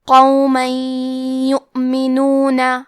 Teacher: حرف القاف کے ادائیگی زبان کے جڑ اور تالو کے نرم حصے سے ہے. قاف حروف التفخیم میں سے ہے تو ہم یہ حرف کو موٹی آواز میں پڑھیں گے. · ادغام کا معنی ہے حرف کو حرف میں داخل کرنا، تو ہم تنوین کو یا میں ملا کے غنہ اور تشدید کے ساتھ یہ حکم کو ادا کریں گے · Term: ادغام بغنہ